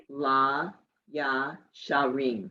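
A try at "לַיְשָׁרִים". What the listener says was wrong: It isn't ya. It's la ye. La ye sharim.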